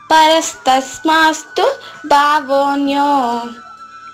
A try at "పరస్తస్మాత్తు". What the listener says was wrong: పరస్తస్మాత్తు నేను సా పలకడం లేదు. పరస్తస్మాత్తు